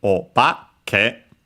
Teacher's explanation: By adding the honorific prefix, we actually get obake, accented on the ba instead. And here we technically can see a case in which when we add the prefix o, the accent changes.